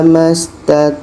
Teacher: Contoh in uridu illal islah mastat ain dibaca kita dapatkan vokalnya letaknya di tengah-tengah tenggorokan